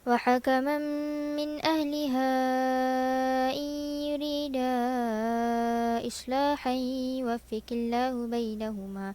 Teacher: Kita ataf dengan membaca 4 harakat pada mad munfasil.